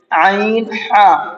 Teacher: عین ہا بیچ حلق سے ادا ہوتے ہیں۔ تو بیچ حلق کہتے ہیں اس حصے کو جہاں پر یہ ہمارے حلق میں ابری ہوئی جو ہڈی ہوتی ہے، جو باہر کو نکلا ہوا حصہ ہوتا ہے حلق کا ہمارا تھوڑا سا، اس کو درمیانی حلق کہتے ہیں۔